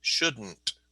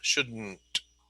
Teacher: So that is pronounced shouldn't, and it just comes out of your nose.